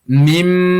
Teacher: gunnah atau mendengunkan bacaan sampai 2 ketukan ketika membaca idgham ada mim tasydid ini